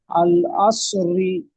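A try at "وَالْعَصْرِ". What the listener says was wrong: ওয়াও যাবার ওয়া হয়, তাহলে আল হবে না, ওয়াল হবে, ওয়াল।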